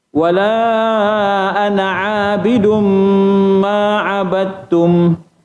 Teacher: Bila dah sejenis, diidghamkan, dimasukkan dal ke dalam ta. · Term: idgham mutajanisain